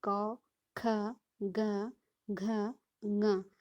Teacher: सबसे पहले जो हमारा स्वर तंत्र है उसमें कंठ आता है, और कंठ के द्वारा क वर्ग का उच्चारण किया जाता है। इसमें क, ख, ग, घ, ङ। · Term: कंठ ध्वनियाँ